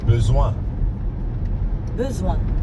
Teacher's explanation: Notice how the first part of besoin, le, is a bit like the first sound in the word but. And in the second part, soin, there's the nasal sound that we hear in train.